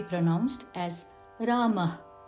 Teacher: Rama was written with two dots, a visarga, which is an expulsion of air